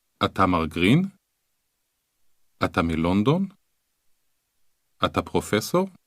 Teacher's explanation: can you hear how the voice rises at the end of a question just as it does in english